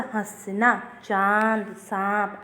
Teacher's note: इसका उच्चारण करते समय हवा मुख और नाक दोनों से निकलती है। इसे चंद्र बिंदु के रूप में भी लिखा जाता है। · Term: अनुशासिक